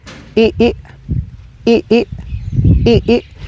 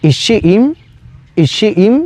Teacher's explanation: Y este es el quinto sonido que tiene la I en la lengua maya, que es la vocal rearticulada, es decir, es doble I, pero en medio tiene un apóstrofo y le vamos a dar una pequeña pausa entre los dos